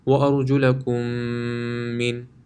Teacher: as long as there's a meme after it, then it will be read with ghunna